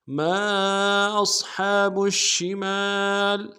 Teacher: میم کے ساتھ الف مدہ ہے، ایک الف امداد میں کھینچیں گے